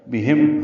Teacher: ہا اقصی حلق سے ادا کریں گے، میم ساکن پہ اظہار شفوی ہے